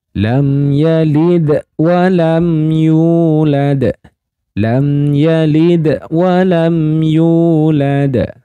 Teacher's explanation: Nah, mim sukun bertemu dengan ya, maka disebut dengan idhar syafawi. Jadi mim sukunnya dibaca jelas, tidak boleh didengungkan, tidak boleh dipanjangkan.